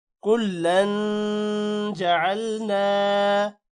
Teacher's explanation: کلن جعلنا، یہاں پر بھی غنہ ہوگا۔ کلن، تنوین کے بعد حروف اخفاء یعنی جیم آ رہا ہے تو غنہ بھی کریں گے۔